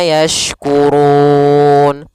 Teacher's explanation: Afala afala yashkurun. Kemudian pelafal ru itu ru tebal karena dia berharakat dhammah, bertemu di akhir bacaan.